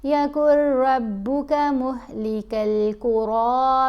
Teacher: کاف کو را سے ہی ملانا ہے لیکن غنہ نہیں کرنا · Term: ادغام